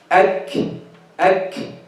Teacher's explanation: So we are starting the kaf with its shidda and ending with its hams. In the beginning of the kaf, the sound is closed completely. Then the breath is released.